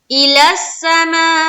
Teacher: یہ ہے مد متصل کیونکہ حرف مد کے بعد حمزہ ساتھ ساتھ ہے